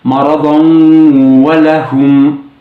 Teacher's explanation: اگر تنوین کے بعد والا لفظ یا آیت حروف ادغام مع الغنہ کے کسی حرف سے شروع ہو تو اسے مشدد بنا کر ناک میں گنگناتے ہوئے ادا کرنا ہوگا، جسے غنہ کرنا کہا جاتا ہے.